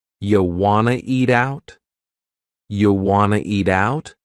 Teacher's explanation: we have reduced want to become wanna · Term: reduction